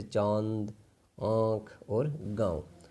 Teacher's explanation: चंद्रबिंदु ये अनुनासिक है और जब भी इसका उच्चारण करेंगे इसकी ध्वनि नाक और मुंह दोनों से निकलेगी, जैसे चांद, आँख और गाँव।